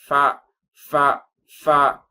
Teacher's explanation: ஃபா சொல்லும்பொழுது மேல் பல் கீழ் உதட்டில் படும் ஃபா ஃபா ஃபா அது கூட சொல்லுவாங்க கீழ் உதட்டை மேல தூக்காதீங்க ஃபா · வாவ் வாவ் வாவ் என்பதாக இதை உச்சரிக்க வேண்டும். ஆனா ஃபா சொல்லும் பொழுது மேல் பல் கீழ் உதட்டில் படும்.